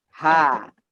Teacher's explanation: Kalau H dia terbuka meskipun sukun masih keluar nafasnya. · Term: huruf H